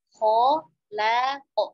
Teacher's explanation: kho tebal, lamnya tipis